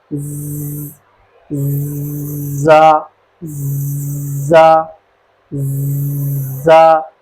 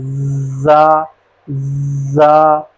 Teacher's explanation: زا زا زا، اس طرح ہم نے اس کو ادا کرنا ہے۔ تھوڑی سی سیٹی کی آواز ہلکی سی اور سختی سے پڑھنا، زا زا، اس طرح۔